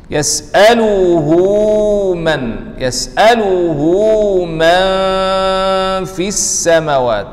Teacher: Nun mati, bertemu dengan fa, ini ikhfa haqiqi. Ada guna dua harakat. Man fis sama, ma, wa, mim nipis, wa nipis. · Ada panjang dua harakat, ini mad silah sughra.